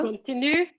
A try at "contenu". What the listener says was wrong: Contenu. Pas continu, j'ai entendu contenu. D'accord, c'était autour de contenu.